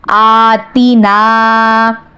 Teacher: تی کو بالکل نہیں کھینچنا اور نون کو 1 الف کے برابر کھینچنا ہے